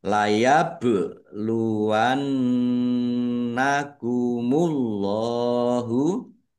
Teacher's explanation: Layab luwannakumullahu, bak sukun, bacaan qalqalah, dibaca memantul, ditampakkan pantulannya